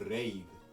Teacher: This is a nice R sound. It's a trilled R sound.